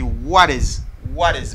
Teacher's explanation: C'est comme si je prononce un D rapide, mais qui pas D naturel. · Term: flat D